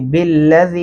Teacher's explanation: اس کے اوپر دو الفی مدہ ہے، اس کو دو الف کے برابر کھینچنا ہے